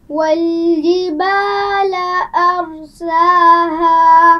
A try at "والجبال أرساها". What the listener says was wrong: جیم کو واضح کیجیے. والجبال.